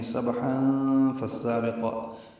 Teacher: وقفاً 2 حرکات لمبا ہے۔ سبحا ملانے کی صورت میں یہاں تنوین کے بعد فا آنے کی وجہ سے اخفا ہوگا